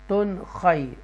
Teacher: یہاں اظہار کریں گے، تن کو کلیئر پڑھیں گے کیونکہ حروف حلقیہ میں سے خا آ رہا ہے ، تن خی، اوکے۔ پھر ہے اوروم میم مش، ادغام شفوی